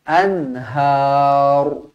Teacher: Kalau kita nak berhenti, ra dibaca tebal kerana sebelumnya berbaris atas.